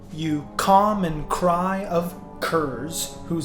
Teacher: each line contains 10 syllables and every other syllable in the line is stressed or emphasized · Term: iambic pentameter